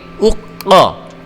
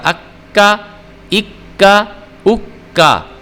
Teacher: ये हरूफ क़लक़ला में से क़ाफ है, इसको हमने मोटा करके पुर करके पढ़ना होता है। अलिफ ज़बर क़ाफ, ये देखें क़ाफ को मैंने जैसे आपने देखा कि मोटा करके पढ़ा।